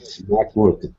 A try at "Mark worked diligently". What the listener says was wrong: The E here is silent. So Mark worked. Forget this E. Worked.